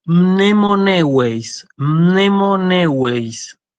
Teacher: Mnemoneueis, entonces tiene dos diptongos, el diptongo eu y el diptongo ei